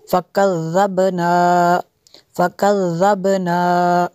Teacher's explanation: با پہ قلقلہ ہوگا، ذال کو نرم کرنا ہے